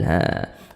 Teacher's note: panjangnya sama dengan mad thi'i dua harakat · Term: mad badal